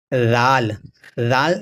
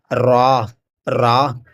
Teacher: زبان کی نوک اور سامنے والے اوپر کے جو 2 دانت ہیں ان کے کناروں سے مل کر رال ادا ہوتا ہے